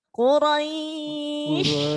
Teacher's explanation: Jadi harus ada hembusan nafas yang banyak shin itu.